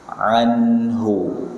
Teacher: Nun sukun bertemu dengan ha, hukumnya izhar. Ya, nun sukun ketemu ha, hukumnya izhar. Nunnya dibaca jelas.